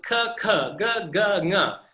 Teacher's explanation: The placement of the tongue is the same. Just some are stronger aspirations than others.